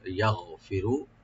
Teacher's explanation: গাইনটাকে আমরা রাইট দেব, গলার শুরু থেকে আনবো। ইয়াগফিরু, কলকলা হবে না, আর রটা একটু মোটা করে পড়বেন, ডিপ করে।